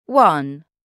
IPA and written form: wʌn (one)